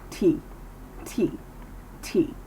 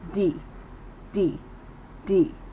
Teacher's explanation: especially in the middle of words and tooth and tongue positioning the difference is the moving of air through the teeth when making the T sound